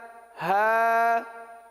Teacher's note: یا جو ہے یہ وسط لسان وسط تالو، زبان کے درمیان اور تالو کے درمیان سے ادا ہوتا ہے، اور ہا جو سینے سے متصل حلق ہے یہاں سے ادا ہوتا ہے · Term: مخرج